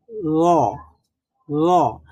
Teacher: জিহ্বার অগ্রভাগ সামনের উপরের চার দাঁতের গোড়ার সাথে চার দাঁতের গোড়ার সাথে আমরা লাগিয়ে বলেছিলাম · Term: র এর মাখরাজটা, র এর মাখরাজ